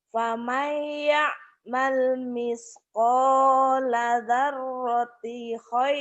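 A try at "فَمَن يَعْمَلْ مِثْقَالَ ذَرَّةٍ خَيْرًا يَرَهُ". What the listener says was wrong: tin, daratin ada tanwin di situ. Daratin, tin ada tinnya.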